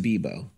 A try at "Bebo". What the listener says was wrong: It's Bebo, not Debo. It sounded like Debo.